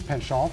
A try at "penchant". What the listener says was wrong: You gotta put the nasal in it.